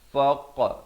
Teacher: bulatkan mulut, jangan pepeskan jadi faq, tak betul ya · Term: lantunan